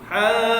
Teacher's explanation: Mutsaqqal yang mana bacaannya berat sedikit sebab ada sabdu. Haddu, terus sabdukan huruf dad, hujung lidah sentuh belakang geraham kiri. Hadd, automatik bibir kita belok ke kanan.